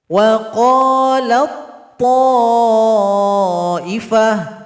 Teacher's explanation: Maka cara bacanya idgham juga. Huruf ta tidak dibaca lagi karena dia telah gabung kepada huruf to. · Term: idgham mutajanisain